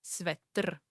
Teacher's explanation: The Czech R is very strong and vibrating.